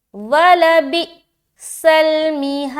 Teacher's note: دال میں قلقلہ کر رہے، قلقلہ اسٹرانگ قلقلہ ہوگا، قلقلہ کبرا، تو یہاں پر دال ظاہر ہوگا تھوڑا زیادہ.